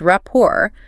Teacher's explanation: the T is silent, so it's pronounced rapport, with the stress on the second syllable.